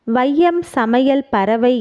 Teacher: சொற்களின் முதல் இடை இறுதி ஆகிய இடங்களில் வரும்பொழுது தனக்குரிய இரண்டு மாத்திரை அளவிலிருந்து குறைந்து ஒலிக்கிறது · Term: ஐகாரக் குறுக்கம்